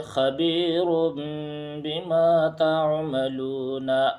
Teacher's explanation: خبیر بما تعملون، اس میں بھی اقلاب ہوگا کیونکہ تنوین کے بعد با آ رہا ہے تو اس تنوین کو میم ساکن سے بدل کر غنہ اور اخفا کے ساتھ پڑھیں گے، اسی کا نام اقلاب ہے۔